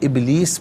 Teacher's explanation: فسجدوا الا ابلیس، یہاں پر رکیں گے تو ابلیس پڑھیں گے. باس ساکن ہے لیکن کلکلا ہوگا، آواز لوٹتی ہوئی محسوس ہونی چاہیے